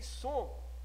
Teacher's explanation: Nós não pronunciamos esse M. Ele só faz o ato de nasalizar o O, que vai tornar o O saindo pela fossa nasal. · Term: som nasal